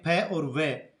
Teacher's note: नुक्ता वाले फ और व दंतोष्ठ वर्ण कहलाते हैं, क्योंकि दंत और ओष्ठ के मिलने से बोले जाते हैं।